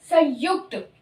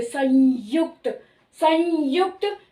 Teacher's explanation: य भी जिस तरह से तालू से टच नहीं करता ना ही दांतों को टच कर रहा है